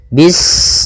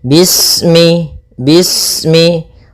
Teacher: Pada bacaan bis ini, sempurnakan huruf sinnya. Ketika sinnya sukun, ini ada sifat saofir. Dia harus kita alirkan nafasnya.